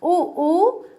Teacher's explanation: ऊ ऊ में क्या हुआ, स्पर्श नहीं करे हमारे होठ, ठीक है, लेकिन होठों का जो शेप था, जो आकार था, वो चेंज हो गया, और चेंज होने के बाद जो कंठ से ध्वनि निकली है, तो वे ऊ ऊ को उच्चारित करते हैं, ठीक है, ऊ ऊ को बाहर निकालते हैं, ऊ ऊ।